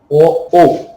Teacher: এই দুটো বর্ণের জন্য দুটো জায়গা দরকার হয়, কণ্ঠ আর ওষ্ঠ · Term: কণ্ঠস্থ বর্ণ